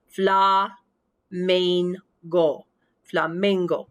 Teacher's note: i go up on that second to last syllable